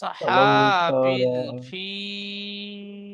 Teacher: ফিল আয়াতের শেষে তিন আলিফ টান দেন।